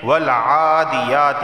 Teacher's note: عین کھڑا زبر آ اور یا کھڑا زبر یا، ان دونوں کو ایک ایک الف کے برابر کھینچ کر پڑھا جائے گا